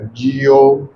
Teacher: जिथे भी बिहारी आवे थोड़ा जा जोर पा के लमका के बोलिया करो